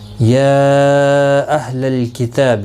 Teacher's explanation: یا مد منفصل ہے، 3 الف کی مقدار کے برابر کھینچ کر پڑھیں گے